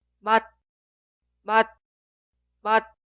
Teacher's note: Pero esto no significa son intercambiables. Al final de pronunciar, detener el flujo de aire, por eso es casi inaudible.